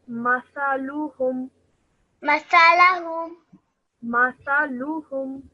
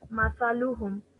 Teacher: both the meme and the tha have only simple fatha, so that's why we're only going to be saying it for 1 second each.